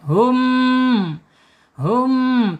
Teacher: Ketika ada mim sukun menghadapi huruf alif ya menghadapi selain ba dan selain mim maka namanya izhar syafawi. Izhar syafawi ya terkatup mulutnya karena mimnya jelas dibaca.